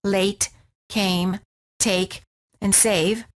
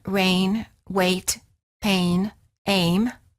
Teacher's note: the lips are not rounded and they are relaxed and the tongue is tense moving from mid High position to high position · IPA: /eɪ/